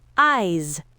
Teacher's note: Eyes ends with a voiced z sound, long vowel,